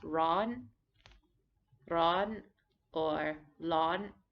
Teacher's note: This is also written with an R, but commonly pronounced with an L or a slightly rolled R.